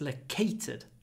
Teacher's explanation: try to make the a short because it comes before an unvoiced T not located but located we get a little pause L loated